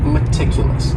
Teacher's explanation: stress is on that second syllable meticulous meticulous that first syllable also has that schah that a sound that reduced vowel sound